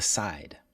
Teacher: the side is a little longer